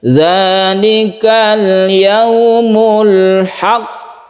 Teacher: tahan dulu hak baru pantulkan qafnya, itu qalqalah kubra kalau dia itu bertasydid